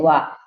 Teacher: दंतोष्ठ। दांत और ओंठ दोनों से बोले जाते हैं वा।